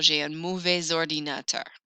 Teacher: I don't usually hear that S, but followed by an O, I will. J'ai un mauvais ordinateur to make it flow.